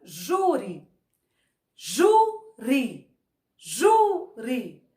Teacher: o ju saiu com mais força ele é a penúltima silo que nós contamos de trás para